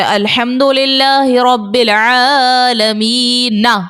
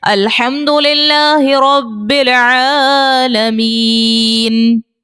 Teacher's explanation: نون کے اوپر جو زبر ہے, اس کو ہم نے ہٹا کر کیا کیا, علامت جزم لگا دیا, اس کو ساکن کر دیا. تو یہ جو ساکن اس کو کر رہے ہیں ہم, اسی کو سکون عارضی کہیں گے.